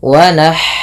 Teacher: alirkan nafas pada lafal ha yang sukun